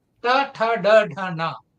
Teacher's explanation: They are pronounced with the murdha, with the hard palate. mhm. So they are called murdhanya.